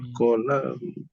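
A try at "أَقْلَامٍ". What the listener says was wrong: Jangan itu huruf kaf tu. Dia aqlamin.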